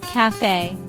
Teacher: Two syllable word. Stress is on second syllable.